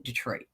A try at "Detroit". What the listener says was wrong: See, I just heard you say Detroit. It was more like Detroit. I'm talking about the black emphasis on D. Detroit.